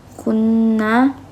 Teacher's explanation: nunnya ini dibaca gunah karena Nun bertasdid